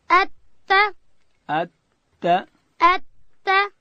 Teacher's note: تا ادا کیږي د ژبې سر به د لوړې زامې د مخ د دوو غاښو و بیخو ته ورولو